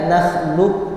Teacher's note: Jadi huruf qof itu hilang seakan-akan hilang langsung ke huruf Kaf maka dibaca nahlub langsung ke Kaf sedangkan ketika dia yang membaca